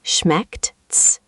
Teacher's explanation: The start has a sharp sh sound, and then a hard K and a T at the end.